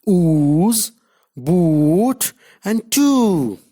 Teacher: Now long oo. It is a back close rounded vowel